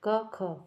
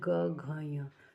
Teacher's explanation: क ख बोला कंपन नहीं हुआ लेकिन ग घ ञ तो यहां कंठ में है क्या है कंपन हो रहा है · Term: अघोष